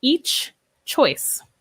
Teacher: we do not link the ch and j sounds